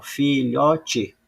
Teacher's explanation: vejo que a sí tônica ela não é a última ela é a penúltima